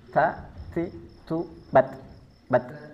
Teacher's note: ujung lidah bertemu dengan pangkal gigi seri atas. Bukan di tengahnya, bukan di ujungnya, tetapi di pangkal gigi seri atas. · Ta ini bersifat hams dan hamsnya nafasnya hanya sekedar percikan. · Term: huruf ta